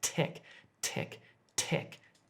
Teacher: when I'm saying tech, as in technology, my tongue is actually just touching the back of my front teeth